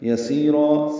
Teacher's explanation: یسیرا سی یا مدہ را الف مدہ مد عوض دونوں کو دو دو حرکات لمبا کرنا ہے